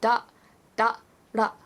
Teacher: it's like a do but with more of a flick like it's an L